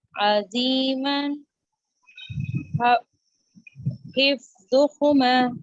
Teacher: हरूफ मद्दा जब आएगा हिफ्ज़ुहुमा एक अलिफ के बराबर हम इसको लंबा करेंगे